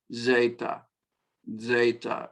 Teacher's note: Alpha, alpha, beta, beta, gamma, gamma, delta, delta, epsilon, epsilon, zeta, zeta, or zeta, either one. Zeta, I'm giving a little DZ, DZ, D with a Z, or simply Z, zeta, zeta.